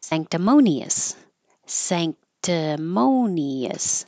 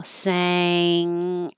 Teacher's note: And there was a good question about why is this an ng ang and when it looks like an in. When the in is before a k, the in that would normally be in the front, san, moves to the back because your tongue is already very high in the back for a K.